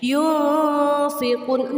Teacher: Nun mati dan tanwinnya berbunyi samar-samar, bukan berbunyi ang ya. Sekali lagi, yunfiqun, nunnya menyentuh makharijul huruf fa ya. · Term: ikhfa